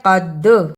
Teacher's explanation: قاف کو موٹا پڑھنا، دال جزم کی صورت میں حرف قلقلہ ہے، یعنی اس لفظ کو ہلا کر پڑھنا ہے